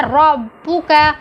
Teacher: را کو گول پڑا گیا ہے